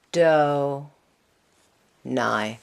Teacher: usually when we have a patach followed by a yud, we're going to pronounce that as diphthong I